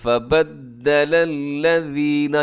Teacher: یہاں پر جو لام استعمال ہوئے سب کے سب باریک پڑھے جائیں گے، اس میں کوئی بھی لام موٹا نہیں ہے